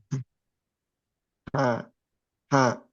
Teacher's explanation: Aliran aliran udara aja gitu ya. Iya. Ha, ha. Tanpa suara gitu. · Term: hak